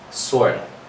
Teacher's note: usually we drop that preposition and we replace it with the A and we give it a schwa sound